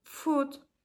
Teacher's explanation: Back vowels such as u in the word foot are produced with the tongue positioned toward the back of the mouth.